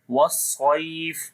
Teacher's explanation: Waw we connect with the swad with the whistling sound, and swad we read in heavy sound due to isti'la letter.